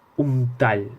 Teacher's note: N'hi ha una assimilació bilabial en les paraules un tall, que es pronuncia com la N com si fora una M